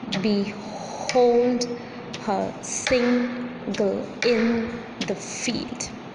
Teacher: Here be is unstressed, hold is stressed, her is unstressed, sing is stressed, girl is unstressed, in is stressed, the is unstressed, and field is stressed syllable.